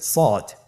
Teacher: সদ হরফটি পুর হরফ, মোটা হরফ, উচ্চারণের ক্ষেত্রে মোটা করে পড়তে হবে